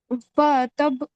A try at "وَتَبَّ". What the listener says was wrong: وا کھینچنا نہیں ہے.